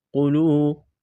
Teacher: قاف کو موٹا کرنا ہے، واو مدہ ہے، ایک الف کے برابر کھینچنا ہے